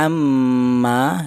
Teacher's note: di sini ada mim bertasydid yaitu dibaca ghunah